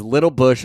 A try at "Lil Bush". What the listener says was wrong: don't like how you pronounced it. It's Lil Bush. not Little Bush.